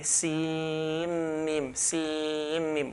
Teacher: whenever noon sakina follows a mim in tajweed, we merge the noon into the mim. So we actually say sim mim, sim mim. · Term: merging